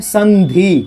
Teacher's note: अनुस्वार का उच्चारण किस में होता है? न में होता है।